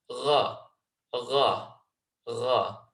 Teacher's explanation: If you make that fuller and you roll it, you get the letter Ra, Ra, Ra. And again, you can feel that vibration at the top of your throat, just behind your tongue, and that denotes exactly where the ghain is coming from.